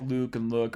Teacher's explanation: luke and look are rounded vowels